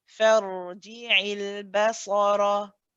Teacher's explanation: we're going essentially from the fa to the ra, and the ra is heavy, so we're saying far.